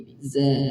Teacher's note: Za keluar dari lidah bagian ujung dalam kondisi lidah tenang di bawah. Kemudian suara keluar dari antara 2 gigi. Diberikan desis, ada desisnya. Ada sifat as-safir, ada desisnya.